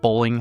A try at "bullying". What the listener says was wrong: bullying. It almost sounded like you said bowling. Bullying.